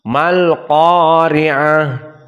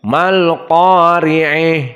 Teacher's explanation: Madhab jumhur dibaca dengan fathah, mal qari'ah, dan berkesendirian Al-Kisai dibaca dengan al-imalah al-kubra